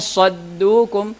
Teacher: Jadi kita tidak menyebutkan nun di makhrajnya seperti izhar, dan kita juga tidak masuk langsung kepada huruf setelahnya. Ya, jadi jadi nunnya disembunyikan, kemudian ada persiapan untuk masuk kepada huruf setelahnya. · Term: ikhfa